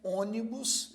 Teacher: a palavra ônibus por sua vez também tem três sílabas e a primeira sílaba desta palavra é a mais forte então ônibus veja tem três sílabas e a primeira sílaba a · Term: proparoxítonas